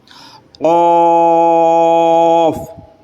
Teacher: قاف، اسے حروف لہویہ کہا جاتا ہے، زبان کی جڑ اور تالو کے نرم حصے سے ادا ہوتا ہے، یعنی جو ہماری زبان کی جڑ ہے اس جڑ کے ٹھیک اوپر آپ تالو میں دیکھو گے تو وہاں پر تالو کا نرم حصہ ہوگا، وہی سے یہ ادا ہوتا ہے۔